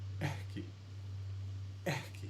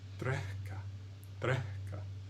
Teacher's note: Except he's doing an exhalation, not an inhalation. Right, I'm making a little bit of a breath, or perhaps you could say like kind of an H before I make that K.